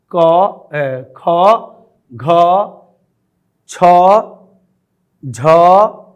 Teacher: क, ख, घ, छ, झ इनमें अधिक वायु निकलने के वजह से इन्हें महाप्राण कहा जाता है